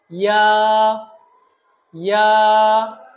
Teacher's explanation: ইয়া হরফটা নরম করে আমরা বলবো এবং জিহ্বার মধ্যখান থেকে একটু নরম করে বলবো এবং এক আলিফ টানবো।